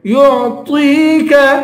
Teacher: طا کو یا سے ملا کر یا کو ایک الف کی مقدار کھینچ کے پڑھیں گے اور طا کو پر پڑھیں گے